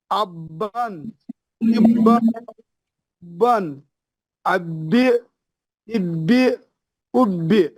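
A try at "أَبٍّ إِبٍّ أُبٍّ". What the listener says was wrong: ना, ये 2 जेर हैं, ये अब बिन, इब्बिन, बिन।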